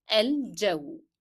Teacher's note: don't forget the hidden D in the pronunciation of j